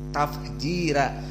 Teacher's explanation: tafjira dibaca dengan tarqiq karena sebelumnya kasroh. Tafjira. Dan fa as-sakinah huna yufidul hams.